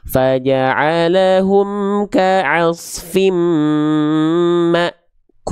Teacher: huruf-huruf yang berjumpa dengan hamzah sukun itu akan terhenti terhentak seolah terhenti atau terhentak. Contoh misalnya di Quran surah Alfil ayat keelima kita baca dari awal ayatnya misalnya faja'alah kaasfim makul.